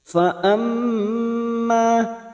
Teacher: mim yang bertasdid gunna musaddada kita dengungkan dan ditahan selama 3 harokat. Fa amma ma-nya kita panjangkan 2 harokat fathah diikuti alif mad tabi'i.